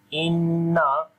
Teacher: we make a gunna sound here due to shad sign is coming on the noon.